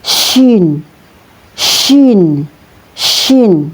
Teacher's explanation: Huruf syin ini keluar dari tengah lidah · Huruf shin ini keluar dari tengah lidah atau wasatul lisan bersama langit-langit atas atau wasatul hanak al-a'la